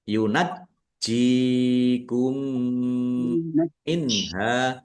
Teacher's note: Jimnya ada tasdidnya dibaca dobel ditekan biar tampak dobelnya. · Mim sukun bertemu dengan huruf mim. Bacaan idgham mimi atau idgam mutasilat dibaca mendengung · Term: izhar